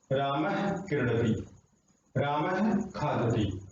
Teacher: कै और खे से पहले विसर्ग आ रही है इनको बोलते हैं जिह्वा मूली